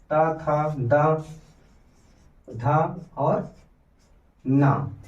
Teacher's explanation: दंत में हमारा त वर्ग आएगा त था द ध और ना